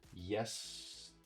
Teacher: And as I mentioned before, when there is no stress, there is a schwa sound. Now, the primary stress, the highest stress, goes on the first syllable. The second syllable gets no stress. So instead of saying ter, you say ter.